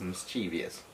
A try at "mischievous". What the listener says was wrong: No, there's no T. It's mischievous.